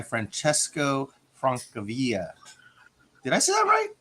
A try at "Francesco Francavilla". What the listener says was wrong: No, he's Italian, so you'd pronounce the L's in this case, I think.